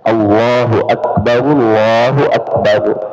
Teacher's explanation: Allah lafzul jalalah lamnya tebal